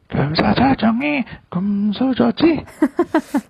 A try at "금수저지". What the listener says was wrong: Almost sounded like it was 금사자중에 금수저지. 금사자 would be a gold lion, I suppose. 금수저. 금수저.